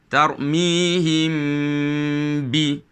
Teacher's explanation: Iaitu kita tetap juga membunyikan mim tersebut. Kita bunyikan mim dalam keadaan dengung, kemudian kita sebutkan huruf ba. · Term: ikhfa syafawi